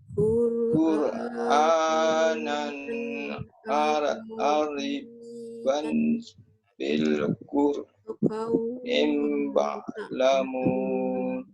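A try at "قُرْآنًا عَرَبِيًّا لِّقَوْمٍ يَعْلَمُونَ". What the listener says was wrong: Panjang sangat. Panjang ke pendek? Panjang sangat.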